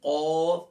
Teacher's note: قوف کا مخرج ہے زبان کی جڑ اور تالو کا نرم حصہ، یہاں سے قوف ادا ہوگا موٹے والا